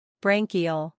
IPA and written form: ˈbræŋ ki əl (Branchial)